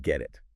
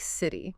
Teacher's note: When a T sound comes between two vowel sounds, it often softens. It sounds less like a sharp T and more like a soft D, or even sometimes a quick R sound. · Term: flap T